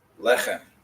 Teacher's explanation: you're putting the accent on the first syllable